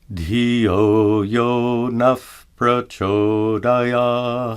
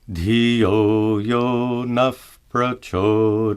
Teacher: note that the visarga is pronounced as an F sound